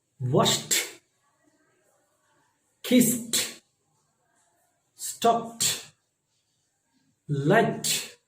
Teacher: it's happening like t sound, because these all words are unvoiced.